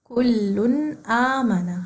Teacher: ہمارے پاس پھر حمزہ آیا اور حمزہ کے بعد الف آئی, تو ہم اس کو 2 کاؤنٹس دیں گے, یعنی 1 الف کے برابر لمبا کریں گے.